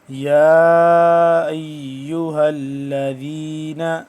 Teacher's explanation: یا کھڑا مد زبر یا، 2 سے 3 الف کے برابر لمبا